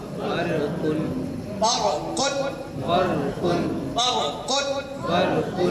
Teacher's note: रा साकिन से पहले जबर हो तो भी रा को मोटा पढ़ते हैं